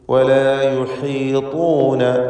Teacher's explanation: ഹൽക്കിൻ്റെ അക്ഷരമാണ് ഹ എന്നതുകൊണ്ട് ശ്രദ്ധയോടെ ഉച്ചരിക്കുക. ത്വാ ഇസ്തിഅലാന്റെ അക്ഷരമാണ്, അതിന് തഫ്ഖീം കൊടുക്കണം, നിസ്ബിയായ തഫ്ഖീം.